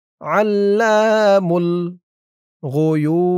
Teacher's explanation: এখানে অক্ফ করার কারণে এই যে পেশের পরে ওয়াও সাকিন এক আলিফ টানটা তিন আলিফ টান হয়ে গেছে